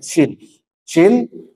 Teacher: Tengah lidah bertemu dengan langit-langit atas menyisakan Celah yang lebih sedikit